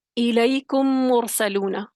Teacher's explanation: پہلا میم ساکن دوسرے میم میں داخل ہوگا، تو دونوں پھر مشدد ہو جائیں گے، ادغام ہوگا، اور تشدید کی علامت جو ہے اس پر پڑی جائے گی. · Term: ادغام مثلین صغیر